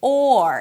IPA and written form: ɔr (or)